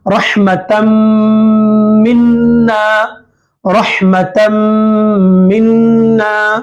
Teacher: मीम इदगाम माल गुन्ना में से है, तो ये तन में जो नून है, ये नून की आवाज को मीम से मिलाना है। मीम से मिलाते हुए मीम की आवाज को नाक में घुमाना है।